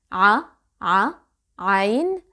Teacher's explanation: And that's because I blocked the air by tightening my throat. I can feel the vibration of vocal cords here. · You can start with ha because it has the same articulation point, but ha is voiceless while عين is voiced. When you say you can feel the air flowing through your mouth, but when you say there is no air.